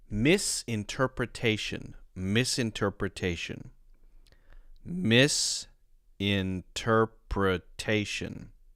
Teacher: It's not a 100% rule, but often a prefix like that is going to be stressed. So miss will be stressed.